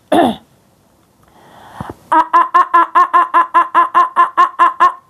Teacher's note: الفتح من الداخل من الحلق